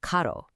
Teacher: But if you take that exact same letter and place it between two vowels, like in the word caro, which means expensive, the tongue taps the hard palate. This creates a rapid flap that English speakers often hear as a soft D sound.